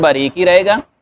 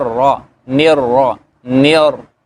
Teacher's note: نون باریک ہی رہے گا لیکن را موٹی ہو جائے گی، اور رحمہ نیر را، نر نر، شروع سے ہی آپ اس کو موٹا کر دیں گے.